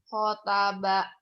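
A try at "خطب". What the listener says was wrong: Goa'a khotoba, bukan khotaba ya, khotoba.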